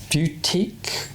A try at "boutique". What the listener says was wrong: It's a boutique. He keeps saying boutique. Just because there's a U in it doesn't mean you need to pronounce it.